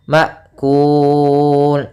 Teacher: masukkan finnya ke mim sambil ditahan gunahnya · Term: Idam